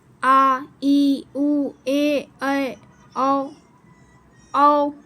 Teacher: दीर्घ स्वर में इन स्वरों के उच्चारण में हर स्वरों से अधिक समय लगभग दुगना समय लगता है। इन्हें दीर्घ स्वर कहते हैं।